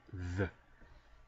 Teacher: if you want to make the voiced counterpart, the, just vibrate your vocal cords